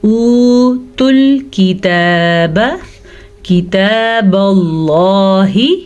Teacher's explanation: اب لفظ اللہ سے پیچھے زبر ہے تو لفظ اللہ کو ہم نے پر پڑھنا ہے